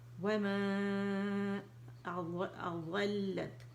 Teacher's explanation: اس کو الگ الگ نہیں کرتے بلکہ ساتھ لے کے چلتے ہیں، ٹھیک ہے، مد بنائیں گے، مد منفصل